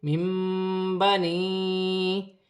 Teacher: نون ساکن کی آواز کو میم سے بدل کر غنے کے ساتھ ادا کیا جائے گا، اسے اقلاب کا قاعدہ کہتے ہیں۔